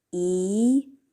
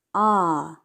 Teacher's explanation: ah in terms of height vowels are considered high mid low e is an example of high vowel ah is an example of low vowel